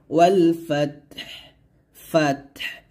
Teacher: ফাত এখানে এই তাও সাকিন হবে এবং হাটাকেও সাকিন করতে হবে দুইটাই হামসে হরফ হামস মানে হচ্ছে দুইটাতে বাতাস বের করতে হবে